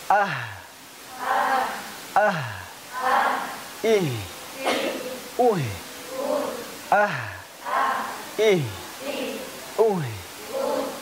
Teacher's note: H juga sama seperti hamzah di pangkal tenggorokan ya.